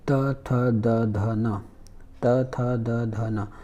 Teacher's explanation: जैसे ही त थ द ध न बोलेंगे तो आपका जीभ नीचे वाली दांत से टकरा रहा है, त थ द ध न, कभी कभी ऊपर वाले से भी, तो इसको हम बोलेंगे दंत।